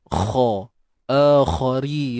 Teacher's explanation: Kha kita kena tebalkan dia. Angkat pangkal lidah kita.